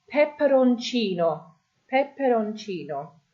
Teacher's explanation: you can see the I there is your stress, peperoncino.